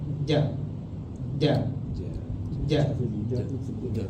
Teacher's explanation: kalau huruf Jim yang Arabi dia tidak ada angin tidak akan mengeluarkan angin dan juga Mak makhraj huruf Jim ni dia adalah tengah lidah